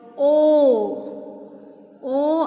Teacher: O is rounded, back and half open. Rounded, back, half open.